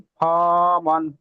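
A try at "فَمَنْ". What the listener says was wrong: ফা টান হয়ে যাচ্ছে ফামান।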